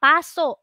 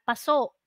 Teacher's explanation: sa unang salita nasa unang pantig ung pangalawang salita nasa ikalawang pantig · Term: diin